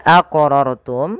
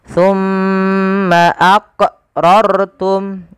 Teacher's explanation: wajib kita pantulkan pada lafal huruf q karena ia termasuk daripada huruf-huruf Qalqalah